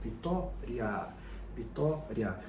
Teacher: O A sendo mais longo dá uma pista pra gente de que ele é a base da sílaba e assim ele é a vogal e não a semivogal. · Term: ditongo